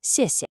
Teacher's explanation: You want that flow from strong to light